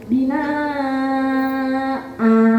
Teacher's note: Panjangnya harusnya beda. Bina a yang a itu 1 alif, yang bina itu panjang 2,5 sampai 3 alif. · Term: mad iwad